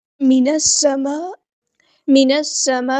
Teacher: حمزۃ الوصل ہمارا ڈراپ ہو جائے گا. لام یہاں پہ لام شمسیہ ہے، اس کو ہم ظاہر نہیں کریں گے. سین کی سیٹی ہم نے واضح کرنی ہے.